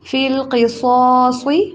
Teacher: قاف کو بھی موٹا، صاد کو بھی اور دوسرے صاد کو بھی. فِي الْقِصَاصِ دوبارہ ایسے پڑھیں، فِل کے اوپر زور نہیں دینا.